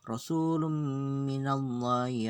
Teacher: Lum itu ada tanwin ketemu dengan mim, itu idgham bi gunnah.